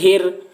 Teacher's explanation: بسم اللہ، ہا را زیر ہر، را کے اوپر تشدید ہے، تشدید والے حرف کو 2 مرتبہ پڑھیں گے، ایک مرتبہ پیچھے والے حرف ہا سے ملا کر اور ایک مرتبہ خود اسے۔